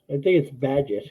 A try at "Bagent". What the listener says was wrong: Badgett? No, it's Bagent with the ENT. you might have. I think you did.